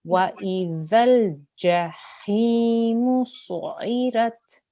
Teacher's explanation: There's no z sound. There's no buzzing sound.